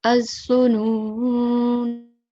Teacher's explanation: we are going to prolong both noons, the noon with the dhamma and the noon with the fatha for 2 seconds each, because we have a vaw mad and then an alif mad.